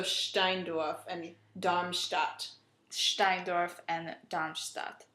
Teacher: When you have an S and a T together, in German it makes a st. Yeah, it makes more of an SH sound. So a sh. So Steindorf and Darmstadt.